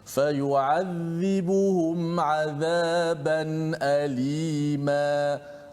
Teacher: Semua huruf tersebut tu semua tu huruf istifal. Tidak ada huruf yang tebal kat situ.